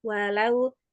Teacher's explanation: Jadi huruf lam itu pada dasarnya adalah tipis ya istifal, hanya pada lafzul jalalah aja yang diawali fathah dan dhammah yang dibaca tebal.